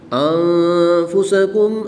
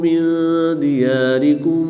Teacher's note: نون ساکن کے بعد دال حروف اخفا میں سے ہے تو ان دونوں میں اخفا ہوگا یعنی غنہ زمانی کر کے پڑھیں گے۔